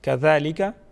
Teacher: ज़ाल को नरम पढ़ा जाएगा, ज़ाल के ऊपर कड़ी हरकत है, इसको एक अलिफ के बराबर खींच के पढ़ेंगे